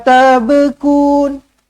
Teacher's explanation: yang ba ni yang kena lantun sebab ba ni Huruf qqalah